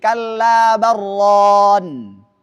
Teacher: Tidak boleh kalla bal ron, tapi harus disambung.